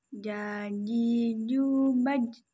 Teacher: Cara melafalkan huruf ja adalah dengan menyentuhkan tengah lidah kita ke daerah langit-langit